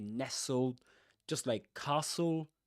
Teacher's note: Nestled you don't pronounce the t you say nestled just like castle